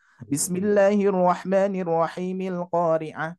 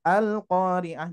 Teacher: Jadi kalau mushaf Madinah cirinya adalah kepala huruf shad ya. Ketika kita mewasolkan bacaan hamzah wasol, maka hamzah wasolnya tidak dibaca. Kita langsung saja ke alif lamnya gitu ya.